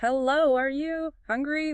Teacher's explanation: We speak slowly. We exaggerate the pitch. Hello, are you hungry? We stretch the vowels. And we do that instinctively. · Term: parent tease